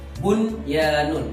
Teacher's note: Dalam kalimat bunyanun sana terdapat nun sukun bertemu dengan ya dalam satu kalimat. Maka harus dibaca idhar wajib. Harus dijelaskan nun sukunnya. Bunyanun, nggak boleh dibaca buyanun.